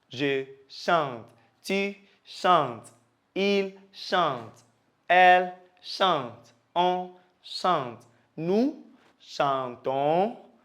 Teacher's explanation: Okay, so you realize that we don't pronounce the ending except for the nous and the vous